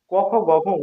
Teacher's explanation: ক খ গ ঘ ঙ উচ্চারণ হচ্ছে কণ্ঠ দিয়ে উচ্চারণ হচ্ছে